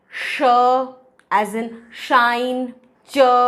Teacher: हमारे टंग का ब्लेड और फ्रंट पोर्शन मूव करता है towards the teeth ridge and hard palate. तो टीथ रिज और हार्ड पैलेट पैसिव आर्टिकुलेटर हैं और टंग एक्टिव आर्टिकुलेटर है। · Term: पैलेटो एल्वियोलर